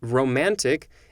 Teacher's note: A metrical foot consisting of a long syllable between two short syllables in quantitative verse, or of a stressed syllable between two unstressed syllables in accentual verse, as in romantic is in accentual amphibrach.